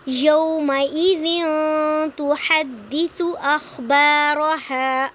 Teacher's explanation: ہم آواز کو ناک میں تھوڑی دیر کے لیے چھپائیں گے، تنوین کو ظاہر کر کے نہیں پڑھیں گے۔ یومئذ تحدث اخبارها، اخبا پہ الف مدہ ہو رہا ہے کیونکہ الف سے پہلے زبر آ رہی ہے، اور اخبارها پہ ہم نے وقف کرنا ہے اور ہم نے الف مدہ کے ساتھ ہی وقف کرنا ہے۔ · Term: اخفا